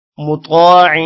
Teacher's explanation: طا موٹا ہوگا، طا کے بعد الف ہے، تھوڑا سا لمبا کریں گے. عین پر غنہ ہوگا.